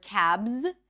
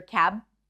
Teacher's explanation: instead of the word cabs, we might hear cab without the consonant. So that consonant might be dropped.